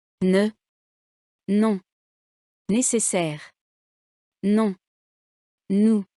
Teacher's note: N, comme dans non, nasal et sonore. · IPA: [n]